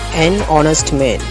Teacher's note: honest என்ற சொல் எழுத்து வடிவில் மெய்யெழுத்தை கொண்டு ஆரம்பித்தாலும் உச்சரிப்பில் உயிரெழுத்தை கொண்டு ஆரம்பிக்கிறது. இங்கு honestல் வருகின்ற எச் என்பது மெய் எழுத்து. ஆனால் அதற்கு சவுண்டு கிடையாது. அடுத்துள்ள எழுத்திலிருந்து தான் அதன் உச்சரிப்பு ஆரம்பிக்கிறது.